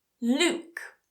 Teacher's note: I'm not saying 'Lyuke', I'm not adding that 'y' in there